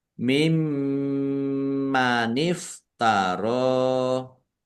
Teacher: Mim tasdid dibaca ghunah atau mendengung. Ditahan biar tampak mendengungnya.